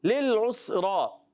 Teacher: اور سین مشدد ہے، ذرا رک کر ادا کریں گے. را پر پیش ہے اس لیے را کو پر پڑھیں گے.